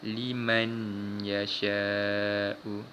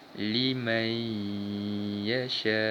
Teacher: Mim baris atas ni terus masuk pada huruf ya tanpa membunyikan huruf nun mati ini. Dan kita baca dengan dengung. · Cara bacaan yang betul, kita masukkan bunyi nun mati pada huruf ya. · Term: idgham bi gunnah